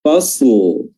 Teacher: Jangan sampai karena ada huruf mati di huruf shad sehingga huruf lamnya sudah tidak jelas lagi.